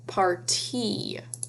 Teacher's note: I hear R in the middle of the word. I also hear a long E vowel sound at the end. Party. So sometimes Y by itself can be a long E vowel sound.